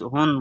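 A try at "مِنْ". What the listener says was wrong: না, হাটা তো ইয়ার সঙ্গে ধরবে, হুন বলে তো আওয়াজটা পরিষ্কার সাফ হয়ে গেল। আওয়াজ তো পরিষ্কার উচ্চারণ হবে না, লুকিয়ে রাখতে হবে নাকের মধ্যে, নাকের মধ্যে করে রাখতে হবে আপনার।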